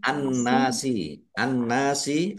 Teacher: Alif lam an-nasi, an-nasi alif lam syamsiyah karena alif lamnya tidak dibaca, langsung masuk ke huruf berikutnya yaitu nun, ditandai nunnya ada tasdidnya. Nun tasdid dibaca gunnah atau mendengung.